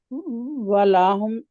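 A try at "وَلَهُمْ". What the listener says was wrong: لام کو کھینچنا نہیں ہے ولہم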